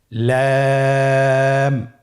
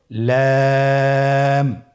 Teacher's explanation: লাম হরফটির মাখরাজ হলো জিহ্বার আগার কিনারা উপরের দাঁতের মাড়ির সঙ্গে লাগিয়ে উচ্চারিত হয়।